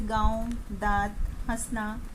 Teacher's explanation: अनुनासिक, चंद्रबिंदु, इसका उच्चारण नाक और मुंह से होता है